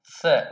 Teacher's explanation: जब जिह्वा ऊपर के दंत को स्पर्श करती हुई स उच्चारण करेगी तो वह कहलाएगा दंत्य सकार